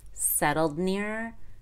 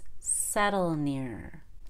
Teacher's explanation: It'll still be very clear when we make the past tense, and we'll know it's past tense and not present tense as long as we make that held D where we stop breathing, really cut off the air.